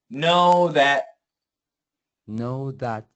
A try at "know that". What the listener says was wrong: now your th needs a little more th